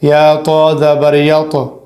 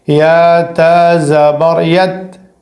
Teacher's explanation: یہاں پر ہمیں صرف یا کو تا سے ملانا ہے اور تا کو باریک کرنا ہے